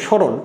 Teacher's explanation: আর আমরা জানি মূর্ধন্য বলে কোনো ধ্বনি নাই বাংলাতে, সেই মূর্ধন্য উচ্চারণ দন্তন্য হয়ে যায় · নিয়মটি আছে যে ত, র, ল, দন্ত এবং থ যদি এর সাথে যুক্ত না থাকে, তাহলে দন্তস্বর উচ্চারণ তালবস্যর মতো হয়। এবং যে ম ফলা উচ্চারণ হলো না, তার জন্য উচ্চারণটি আনুনাসিক হয় · শব্দের আদিতে ম ফলার কোনো উচ্চারণ হয় না